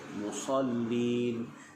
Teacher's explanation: huruf sad pastikan dia berdesir, musallin, dan juga huruf lam musallin, tekankan musallin, dan bila waqaf di situ dibaca dengan ma'arif disukun juga.